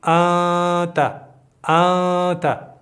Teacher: نو دلته به مونږ دغه نون د خپل ځینه نه ادا کوو، بلکې له پزې نه به یو غږ راباسو چې هغه ته غنه وایي